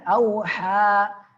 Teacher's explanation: ha tengah tenggorokan